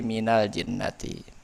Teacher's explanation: nun sukunnya dihidupkan menjadi fathah sehingga bisa dibaca dengan normal. Minal jinnati, awalnya min al jinnati tapi difathahkan jadi minal jinnati. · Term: mutaharrik bil fathah